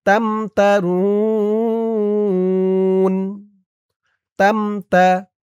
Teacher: ওয়াকফ করার কারণে মধ্যে আরজি ৩ আলিফ টান।